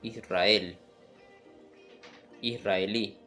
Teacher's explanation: en ambos casos uso el sonido de la r doble o r múltiple vibrante